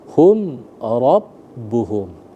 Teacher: hum ra itu tidak boleh digunnahkan karena dia izhar syafawi, masuk ke dalam hukum mim mati atau mim sukun.